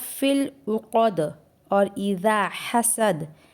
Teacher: فی العقد اور اذا حسد میں بھی دال پر قلقلہ ہوگا